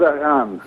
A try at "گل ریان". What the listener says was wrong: گل ریان؟ ٹھیک ہے، گل ریان ہی ہوتا ہے، ریحان نہیں ہوتا، گل ریان ہوتا ہے۔ ریان دروازہ ہے نا جنت کا۔